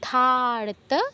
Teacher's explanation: শব্দটা ধারতা ধা তে দীর্ঘ হচ্ছে